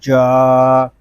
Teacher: نون زبر نا، وثمود الذین، جیم الف زبر جا، جیم جو ہے یہ زبان اور تالو کے درمیان والے حصے سے ادا ہوگا